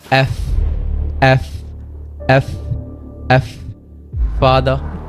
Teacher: উপরের দাঁত এবং নিচের ঠোঁট।